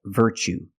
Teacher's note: you see Tue as the second syllable so the t is pronounced CH like chicken